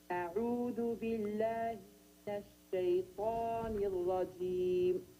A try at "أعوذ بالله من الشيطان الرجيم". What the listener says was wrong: That's good. Only ra mufakhama. Do not make it ra. Repeat again. Ar-rajim.